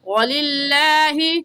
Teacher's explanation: لفظ اللہ سے پہلے زیر ہے تو لفظ اللہ کو باریک پڑھیں گے، اور باریک پڑھنے کا طریقہ کہ آپ کے دونوں ہونٹ پھیل جائیں